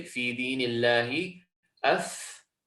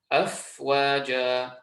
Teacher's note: So we've got an example here of a word which has a letter of al-hams. It's not only voweled, but it actually has a sukoon on. So this characteristic of al-hams is going to be increased.